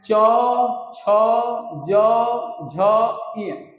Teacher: तालव्य के अंतर्गत च वर्ण के अंतर्गत च वर्ग के वर्ण आते हैं